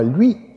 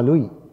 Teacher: weniger Aufwand betreiben es ist nämlich beides mal die gleiche Zungenstellung denn das i da ist die Zunge nach oben gedrückt palataler laut und der dazugehörige halbvokal ist genauso gebildet der Unterschied ist nur die lippenrundung